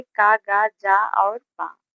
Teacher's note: अल्पप्राण व्यंजन वह व्यंजन होते हैं जिन्हें बहुत कम वायु प्रवाह से बोला जाता है